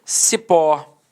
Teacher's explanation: Repare que a sílaba tônica é a última e ela é terminada em O.